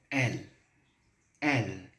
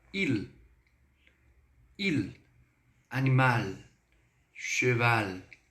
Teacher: ao término da pronúncia, a pontinha da língua, ela fica aqui, ó, atrás dos incisivos